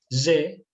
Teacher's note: Cuando decimos Gillette, ese sonido Y, prácticamente lo hacemos con los dientes de arriba y abajo pegándolos. Y, ese sonido, es el sonido de la J.